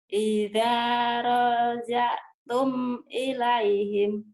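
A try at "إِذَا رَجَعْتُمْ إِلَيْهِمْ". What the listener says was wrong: bagus tapi rohnya pendek.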